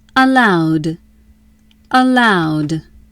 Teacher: Allowed equals allow plus ed. Allow ends with w. W. W is voiced. Ed says d. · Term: final d sound